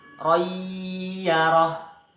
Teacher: Cara bacanya masuk dengan dengung dan ditahan sampai 3 harokat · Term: idgham bi hunnah